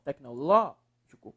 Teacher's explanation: Qual é a sílaba mais forte? Aí é o LO, professor.